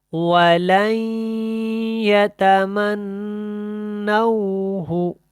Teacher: کیا بنے گا وَلَن، واو جو ہے یہ جب ادا ہوتا ہے تو ہونٹ گول ہوتے ہیں وَلَن يَتَمَنَّوْهُ، ٹھیک ہے. ہو کو زیادہ لمبا نہیں کرنا، اس کے اوپر الٹا پیش نہیں ہے